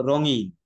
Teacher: র উচ্চারণের সময় জিভ কম্পিত হচ্ছে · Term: কম্পনজাত ধ্বনি